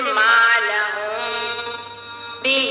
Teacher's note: میم ساکین کی آواز کو ناک میں چھپا کر ایک الف کی مقدار ناک میں چھپا کر پڑھیں گے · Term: اخفاء شفوی